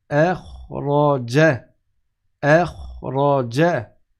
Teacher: Walladhi akhraja, et après le Ra il est grave et le Ra il est grave. Et le Ja il n'est pas grave, il est aigu, il est léger, aminci. On ne dit pas Ja, on dit Ja.